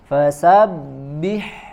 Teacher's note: atas kita gigi seri bertemu dengan bibir bagian bawah ya kemudian ada huruf ba tasydid ya tahan suaranya di makhrajnya kemudian sempurnakan dengan mbak kasrah ya dengan menurunkan rahang bagian bawah